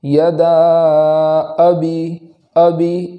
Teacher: اور یہاں اس بات کا خاص خیال رکھنا ہے کہ اس کے بعد جو حمزہ ہے اس حمزہ میں جھٹکا ہونا ضروری ہے۔ اگر جھٹکا نہیں کریں گے تو وہاں حمزہ کا وجود نہیں ہوگا، حمزہ صحیح سے ادا نہ ہوگا۔